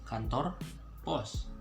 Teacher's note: So post, the way you pronounce it in Bahasa is very simple. Just get rid of the T.